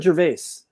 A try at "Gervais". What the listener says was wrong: No S, Gervais.